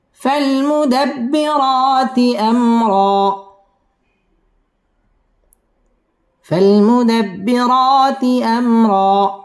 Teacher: মিম সাকিনে ইজহারে খাস গুন্নাহ ছাড়া পড়তে হবে আমরা একালিফ টান দিয়ে ওয়াকফ করতে হবে فالمدبرات أمرا فالمدبرات أمرا